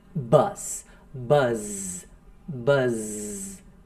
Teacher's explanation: Você vai ver que tem uma leve vibração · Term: vocalizou